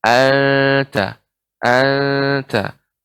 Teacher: anta di sini ikhfa pada huruf ta, ya, lidah tidak lengket di langit